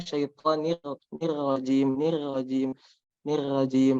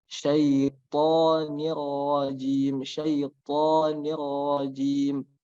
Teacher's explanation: ro keadaannya adalah berharokat fathah, maka harus dibaca tebal